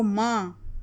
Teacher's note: नून गुन्ना की आवाज़ निकल रही है, नाक से निकल रही है, इसको ही नून गुन्ना कहा जाएगा।